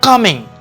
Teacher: The first is come, and then the second is in, of which you will also agree that the first syllable is stressed and then the second one is unstressed